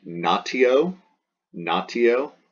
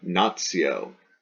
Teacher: Then we pronounce that like a ts, ts. So we soften that T, that t, to a ts.